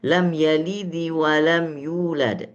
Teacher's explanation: kalau huruf di belakangnya misalnya li, harokatnya kasroh, maka dalnya pantulannya hampir berharokat kasroh